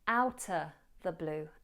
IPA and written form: ˈaʊtə ðə bluː (outta the blue)